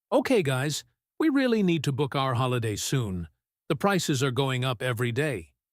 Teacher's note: He drops his voice on day, signaling he is done.